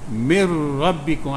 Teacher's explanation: asal min rabbikum jadi mir rabbikum, tasdidkan atas ra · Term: idgham bila gunnah